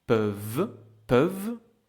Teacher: Peuvent is closed because after the vowel you have the consonant v, peuvent, peuvent.